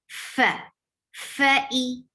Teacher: you are adding hams always for fa. And hams is a flow of breath. Fa, fa-i, e is short, the 2 counts long.